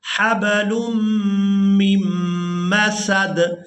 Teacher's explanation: یہاں لام کو میم مشدد کے ساتھ ملائیں گے تو غنہ کے ساتھ ادا کریں گے